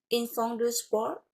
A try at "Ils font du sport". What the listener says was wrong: Je ne prononce pas le T final, OK? C'est juste sport. Ils font du sport.